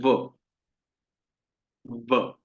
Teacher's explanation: व जो है हमारे दांतों से और ओष्ठ दोनों से उच्चारण होता है। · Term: दंत ओष्ठम